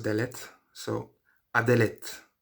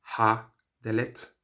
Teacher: there is a tendency now for people to sometimes drop the sound of the consonant the h and just pronounce the vowel